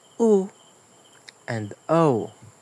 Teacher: The tense vowels are u and o. You really have to engage your lips for that rounding. The Lax vowels doesn't have the same tension in face and lips, but still have the rounding like uh O.